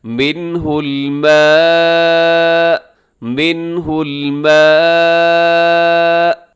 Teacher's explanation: وقف ذرا اپنے طاقت کے ساتھ آواز کو روکنا ہوتا ہے، یعنی ایک جھٹکے کے ساتھ آپ رکیں گے تاکہ سننے والے کو اندازہ ہو جائے کہ آپ نے حمزہ کے اوپر وقف کیا